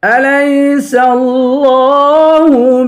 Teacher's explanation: لفظ اللہ کے لام کو پر پڑھیں گے. لفظ اللہ کے لام کے اوپر کھڑا زبر ہے, اس کو ایک الف کی مقدار کھینچ کے پڑھیں گے.